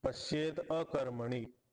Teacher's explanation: पश्येत मध्ये त होता त ला द झाला अ पुढे असताना